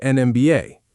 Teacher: The letter M looks like a solid consonant on paper, but you say it M and M starts with a clear vowel sound.